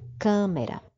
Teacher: eu tenho aí uma palavra de três sílabas não é câmera Então essa antepenúltima sílaba eu pronuncio com mais força é a minha sílaba tônica